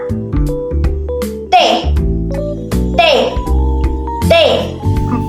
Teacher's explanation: Ketiga, konsonan afikodental yang dihasilkan dengan menggerakkan ujung lidah afikal menyentuh gigi atas dental. Menurut artikulasinya hambat, bunyi hambat yang dihasilkan dengan menghambat saluran suara sepenuhnya dan kemudian dilepaskan secara keseluruhan.